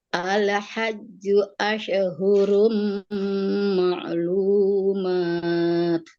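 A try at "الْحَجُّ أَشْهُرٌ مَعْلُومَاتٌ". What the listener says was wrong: Nah ini al-hajju ashhu, jangan asyahu. Tadi ada mantul tuh. Ashhu, jangan ada mantul. Ingat huruf qalqalah. Qaf, ta, ba, jim, dal. Itu aja huruf qalqalah yang mantul. Selainnya sukun tanpa ada pantulan suara. Nggak boleh ala.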